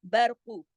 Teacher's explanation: قاف پیش کو زیادہ نہیں کھینچنا ہے کیونکہ صرف ایک حرکت ہے، قاف موٹا پڑھا جائے گا